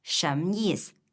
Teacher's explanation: In connected speech, it can sound like 什么意思? So we drop the final vowel in 什么 and 意思.